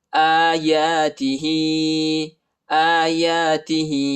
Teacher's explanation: حمزہ اور یا پر جو ہے کڑا زبر آیا ہے، اس کو ایک الف کی مقدار تک کھینچیں گے